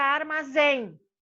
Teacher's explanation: a última sílaba, que é a forte, é o em. Então, você põe acento. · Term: sílaba forte